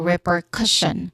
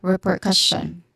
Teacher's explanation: The syllable stress is on first syllable and third syllable.